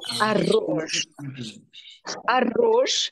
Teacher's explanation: the two RS are rolled